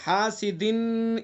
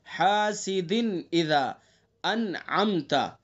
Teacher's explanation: اپنے مخرج سے بغیر غنہ کے نکال کر کے پڑھیں گے، غنہ نہیں کریں گے. حاسدن یہ غنہ ہے اس طرح سے، حاسدن اذا اس طرح نہیں پڑھیں گے بلکہ جلدی سے پڑھیں گے بغیر غنہ کے. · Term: اظہار